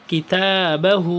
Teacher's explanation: تو اس کو تا کو لانگ کرنا ہے اور ہا کو بھی لانگ کرنا ہے